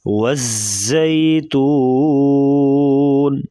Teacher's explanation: واو کو پڑھتے وقت، واو کی ادائیگی میں واو کو پڑھتے وقت ہونٹ گول کریں گے، پھر اس کی صحیح طریقے سے ادائیگی ہوگی. زا کو سختی سے پڑھا جاتا ہے، یعنی سیٹی جیسی آواز نکالیں گے.